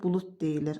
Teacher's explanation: Axırdakı D t kimi tələffüz olunur. İki hecalı sözdür.